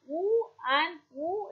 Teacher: be a stressed world long woo sound as in during articulation the back of the tongue is raised in the direction of the soft palate almost to a closed position that is towards the entire soft tongue the lips are closely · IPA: /u:/